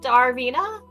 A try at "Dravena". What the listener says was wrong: It's D-R-A, not D-A-R. Dravina or Darvina? D-R-A-V-E-N-A on your character sheet. That's Dravina. Darvina would be D-A-R-V-E-N-A.